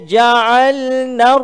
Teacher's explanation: lam tersebut telah diidghamkan ada orang panggil ni Idgham Syamsiah